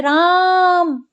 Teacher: जब किसी को संबोधन करते हैं तो जो लंबी मात्रा आती है, दीर्घ ध्वनि आती है, जैसे राम, तो ये हमने लंबा उच्चारण किया तो ये होता है प्लुत।